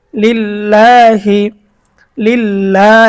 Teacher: আল্লাহ শব্দের ডানে যদি জের থাকে তাহলে আল্লাহ শব্দের লামকে চিকন পাতলা করে পড়তে হয়